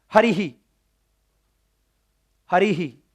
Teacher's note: मतलब जो स्वर का उच्चारण स्थान होगा वही सेम विसर्ग या अर्धविसर्ग का भी हो जाएगा।